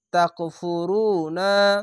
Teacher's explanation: পেশার পাশে ও সাকিন এক আলিফ টেনে পড়বেন